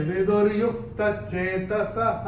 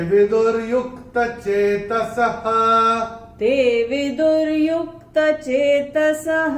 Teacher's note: और चौथे चरण में विसर्ग जो आ रहा है चरण की समाप्ति पे, इसका उच्चारण विसर्ग चरण की समाप्ति पे जब आता है उसका उच्चारण केवल और केवल ह ही होता है